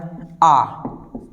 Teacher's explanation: आ हमारा नाक से बोला जाने वाला स्वर है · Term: अनुनासिक